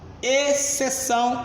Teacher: Em exceção, eu tenho um dígrafo, porque eu pronuncio foneticamente, senhores, exceção à regra, ou seja, eu deixei de pronunciar o X, logo eu tenho um encontro de duas letras e um único som quando eu deixo de pronunciar o C.